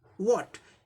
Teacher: ह sound omitted, ये लोप हो जाता है.